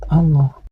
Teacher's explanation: Kalimat Allah ini harus dibaca tafhim, yaitu dibaca tebal, karena didahului oleh huruf yang berbaris fathah. Dan kalimat Allah ini harus dibaca panjang, karena huruf lam pada kalimat Allah ini berbaris fathah berdiri.